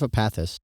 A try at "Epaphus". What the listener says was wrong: You said Epaphus. No, Epaphus. With a PH, not a TH.